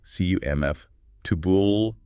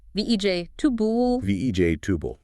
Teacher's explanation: that unstressed middle vowel often becomes a schwa, that kind of muffled ooh sound, like the A in about